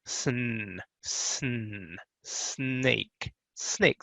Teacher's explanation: the s goes right into that n sound